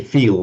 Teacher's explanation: with a distinct dark L at the end · the Americans tend to pronounce everything with the dark L, just rather like the Scots